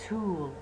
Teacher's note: aspirated يعني الصوت، the sound is realized with a puff of air. the puff of air يعني t t، كأنه t، صوت الت يجي وراها ه بشكل شلون مختصر. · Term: aspirated t